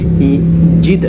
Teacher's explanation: dalam huruf Izhar Syafawi berikutnya I Jid nah ini penting juga mematikan huruf Dal dengan cara dipantulkan karena Dal termasuk di antara lima huruf yang dibaca memantul ba ju di tu qu qof